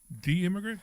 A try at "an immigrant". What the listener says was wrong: You mean the immigrant. You said D, like the letter.